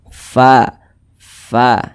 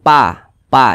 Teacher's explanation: ketika kita melafazkan atau membunyikan huruf fa, maka ada udara yang mengalir ketika kita mengucapkannya. Karena huruf fa itu salah satu huruf yang memiliki sifat hamas.